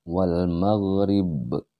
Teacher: Nah, sedangkan dia qalqalah kubra atau qalqalah besar, dia berada di akhir atau tepatnya di tanda wakaf, tanda berhenti ya. Maka dia dibaca lebih dipantulkan lagi ba.